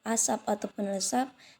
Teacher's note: asap ataupun lesap tidak diucapkan dengan letupan